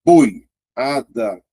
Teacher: o O é mais forte. Então, o I é mais fraco, sendo vogal. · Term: ditongo